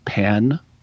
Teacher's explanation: But basically, there's a vowel shift when you have the letter E before a liquid consonant, which is like N or M, and so you pronounce, if I can do it right, in standard English or in non-Northwest Arkansas English, P-E-N, pen, gets pronounced the same as P-I-N, pin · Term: pen-pen merger